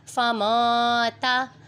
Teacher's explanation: نون پر اخفا ہو رہا ہے کیونکہ حروف اخفا میں سے تا آ رہا ہے نون ساکن کے بعد، یہاں پر غنہ کریں گے۔ اخفا کا مطلب ہوتا ہے آواز کو چھپانا، تو اس لیے یہاں پر ہم لوگوں نے نون کی آواز کو چھپانا ہے۔